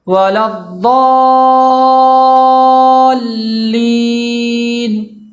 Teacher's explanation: ضاد کے بعد جو مد ہے وہ مد لازم ہے، اور مد لازم کو 5 الف کے برابر کھینچ کے زیادہ سے زیادہ پڑھنا ہوتا ہے۔ اس بات کا دھیان رکھنا ہے کہ اس کو 5 الف کے برابر اس کو کھینچا جائے۔